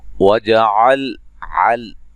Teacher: आइन को वाज़ह निकालना है, लाम को हिलाना नहीं है। ना अलिफ मद्दा नौ वावलीन है।